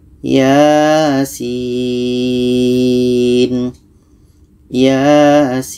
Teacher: Sin ini kita baca 6 harkat.